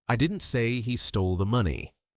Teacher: Depending on which word you stress, the meaning changes completely. Stress on I. I didn't say he stole the money. Meaning someone else said it, not me.